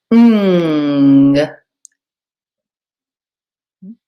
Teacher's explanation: you open your mouth just a little bit and you raise the back of your tongue to the roof of your mouth